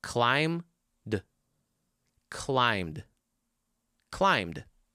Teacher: We're talking about the final sound. And when you say the word climb, what's the last sound? It's not b. It's m. Climb. So all you have to do is just take that original word and add a quick little d at the end.